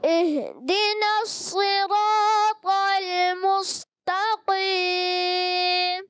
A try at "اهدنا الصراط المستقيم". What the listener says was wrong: مستقیم میں آپ نے تھوڑا سا سین کو باریک رکھنا ہے، پر نہ ہو.